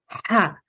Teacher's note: This is a softer ha. You can hear that there's no throat sound in here, okay, because it comes from the bottom of the throat.